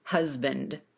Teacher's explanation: That S in the word husband is pronounced as a Z in American English. So you make sure you feel that vibration in your throat that we need for Z